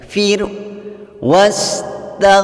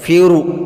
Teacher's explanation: huruf ra sukun yang diawali baris kasrah yaitu fa. Membacanya dibaca tipis.